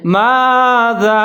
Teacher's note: زبر الف ما ہے آگے زال کے ساتھ جو ہے نا چھوٹی مد ہے اس کو مد جائز کہتے ہیں اس کو آپ نے لمبا پڑھنا ہے